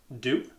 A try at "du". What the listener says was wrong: You say it like more softly. It's du. Du. De shorter.